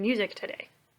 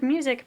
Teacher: we say music so the emphasis is on the first syllable